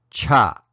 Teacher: So we'll start with the J sound, which becomes an aspirated CH sound